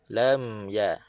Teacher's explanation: Mim rapat bibir dan automatik suara ada rasa di hidung